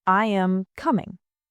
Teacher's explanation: Statements usually fall. I am coming. Voice goes down. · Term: intonation